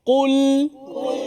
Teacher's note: hati-hati pada huruf lam yang datang selepas Kaf dan juga selepas Kaf Qul nipiskan lam